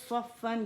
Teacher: صاد صرف ہمارا جو ہے مخفم ہوگا, اس میں اطباق استعالہ دونوں ہیں, تو زبان تالو سے لپٹ جائے گی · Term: موٹا صاد